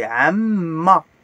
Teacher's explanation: Il y a le double M pour appuyer, pour prononcer deux M, mais liés.